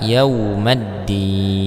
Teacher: yaumaddin Nah di sini terdapat hukum alif lam ee Syamsiah ya Ada alif lam bertemu dengan huruf Dal maka dia dibaca yaumaddin